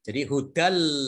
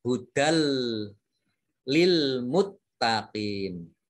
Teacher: dal fathah tanwin bertemu dengan huruf lam, itu disebut idgham bila gunnah. Ditandai dengan tasdid.